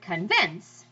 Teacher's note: Iambic meter is the name of the meter that goes down up, like the word convince.